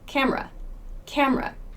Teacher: we don't say the e sound in camera in fast speech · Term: schwa